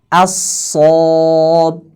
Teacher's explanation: a-nya jadi tebal mengikuti huruf shad